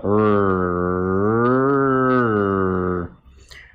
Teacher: движение примерно такое же, как если ты издаешь трель, как в русском или испанском «р», но при этом кончик языка не касается альвеолярного бугорка и, как следствие, не трепыхается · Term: альвеолярный аппроксимант